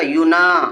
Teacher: अलिफ मद्दा को एक अलिफ के बराबर खींच के पढ़ेंगे।